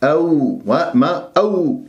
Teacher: ساكن قبلها ميم مفتوح راح يكون عندي ما الطبيعي حركتين، أو واو ساكنة قبلها همزة مفتوحة واو لين